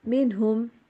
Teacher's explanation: من اور ہم کے اوپر غنہ نہیں کرنا